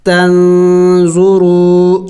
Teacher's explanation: واو مدہ ہے، واو ساکن سے پہلے اگر پیش ہو تو اسے واو مدہ کہتے ہیں اور واو مدہ کو ایک الف کے مقدار کھینچنا ہوتا ہے، لمبا کرنا ہوتا ہے